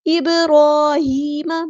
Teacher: बा साकिन पे कलकला होगा